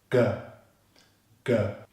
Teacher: relax the tongue, block air at the back of the throat, and then suddenly release the air, and the lips stay open. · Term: voiced G consonant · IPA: /g/